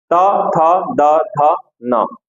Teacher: त वर्ग का उच्चारण कहां से होता है? दंत से होता है।